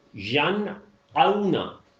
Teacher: آئین کی آواز نہیں ملانی ہے، حمزہ ہی کی رہے گی